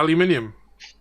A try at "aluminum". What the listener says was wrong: Aluminum. Yeah, there's no other I in there. There's only one.